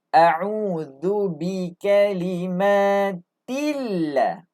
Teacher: Lafzul jalalah sebelum dia baris bawah, nipis dibaca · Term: lam nipis